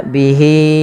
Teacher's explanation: h-nya wajib kita panjangkan sepanjang empat harakat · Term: mad silat tawilah